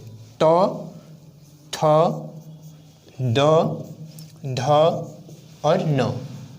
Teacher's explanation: तौ, थ, द, ध, न किसके अंतर्गत आगे, दंत वर्ण के अंतर्गत आगे